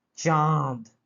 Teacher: এ ব্যবহৃত হয় কি কোনো একটা বর্ণের সাথে, কোনো স্বরধ্বনির সাথে, তার সাথে ব্যবহার হয়, এবং যখন ব্যবহার হয় তখন কিন্তু সেই বর্ণটাকে অনুনাসিক করে তোলে। অনুনাসিক মানে নাক দিয়ে যেন উচ্চারণ হচ্ছে